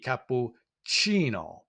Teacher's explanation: We also see that we have a soft sound with that C for chi, cappuccino.